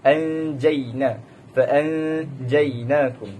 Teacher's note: Apabila nun sakinah atau tanwin bertemu salah satu daripada 15 huruf ikhfa yang disebutkan tadi, hendaklah dibaca dengung samar-samar, tidak terlalu jelas dan juga tidak terlalu sembunyi. Anjaina faanjainakum.